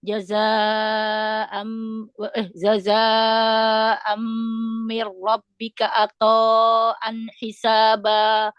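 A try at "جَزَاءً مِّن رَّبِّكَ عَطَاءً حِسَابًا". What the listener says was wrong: Coba diulang huruf ainnya jangan seperti hamzah.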